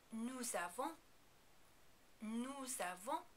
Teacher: We pronounce the S here even though we usually don't because it is followed directly by the vowel sound that begins the word avant. · the S on the end of nous is really more like a Z sound than an American S sound